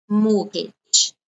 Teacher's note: Notice here you don't pronounce the t sound.